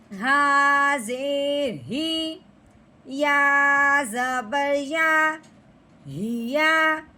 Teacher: موٹی ہا، گلے کی گہرائی سے نکلے گی جو سینے کی طرف ہے حصہ